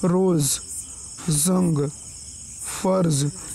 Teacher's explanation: ठीक है, उसके बाद ज का प्रयोग देखिए, ज, यह दंत संघर्षी ऊष्म ध्वनि है। इसके उच्चारण में जीभ का अगला भाग मसूड़े के अग्रभाग को धीरे से छूता है